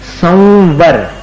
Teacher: संवर, म जैसा उच्चारण नहीं है वो ऊपर के दांत और नीचे के होठ को मिलाकर अपन उच्चारित करें, संवर। व में मिलाना पड़ता है अनुस्वार का उच्चारण।